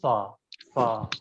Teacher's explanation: زبان کی نوک کو اوپر کے دانتوں کے کنارے سے ٹچ کیا جائے گا. زبان کی نوک کو اوپر کے دانت کے کنارے سے جب آپ ملائیں تو سا سا ادا ہوگا.